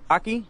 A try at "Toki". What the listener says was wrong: Like Tokyo. like the O in... You pronounce it O instead of... It's not Takio. It's Tokyo.